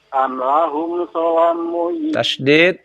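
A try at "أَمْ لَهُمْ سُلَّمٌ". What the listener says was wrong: Tasdid pada lam. Am lahum sulamui sul. Tasdid sul.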